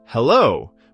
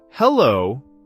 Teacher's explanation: on the phone, it turns into, Hello. with that slightly rising tone